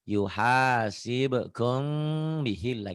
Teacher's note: Bukan ihfa nun mati atau tanwin yang eng ini bukan. M bunyinya tetap M tapi bindeng. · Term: ihfa sapawi